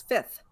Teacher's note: Slips right over that second F. Fifth. I don't even know how I say it anymore.